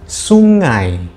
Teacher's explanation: ada silabel ngai yang terdiri dari onset ng dan diftong ai